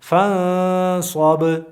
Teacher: نه نو صاد چې کله راغی نو موږ دلته دغه نون پټ اخفا مو وکړه دې ته د نون پټولو ته اخفا وایي او د پزې نه چې اواز راوځي دې ته غنه وایي